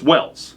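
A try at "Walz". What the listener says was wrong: it's Walls w w walls yeah it's not Wells Tim Walls Tim Walls w LZ but pronounced walls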